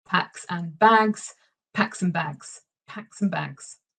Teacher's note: I'm saying the same phrase just a little bit faster with reduced vowel sounds with connected speech with assimilation